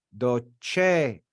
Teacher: we accent the second to last syllable we accent that first e we say docere because it's long